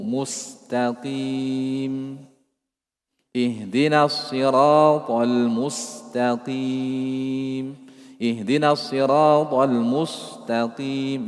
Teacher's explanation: Tipiskan mustaqim, kembali ke asal huruf sin.